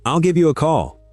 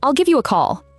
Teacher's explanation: And the A in the middle is barely a sound at all. It's a schwa. It's the most common vowel in English, and it has no character whatsoever.